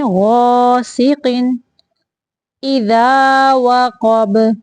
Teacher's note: غین کو موٹا پڑھنا ہے، غاسق اذا وقب، اذا وقب، واو کی ادائیگی کے وقت ہونٹوں کو گول کرنا ہے، قاف کو موٹا پڑھنا ہے اور با کو ساکن کرتے ہوئے قلقلہ کرنا ہے۔